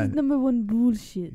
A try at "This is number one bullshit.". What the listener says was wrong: You can try it again. You got it. You got to do more bass in the voice.